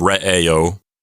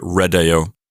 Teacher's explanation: the D gets put in there to prevent there from being two awkward vowels in a row instead of re AO which is hard to say you get